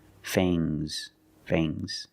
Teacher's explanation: the S is making a zebra sound Z but it's soft